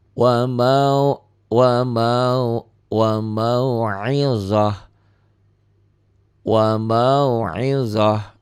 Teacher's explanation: ta marbutah berubah menjadi ha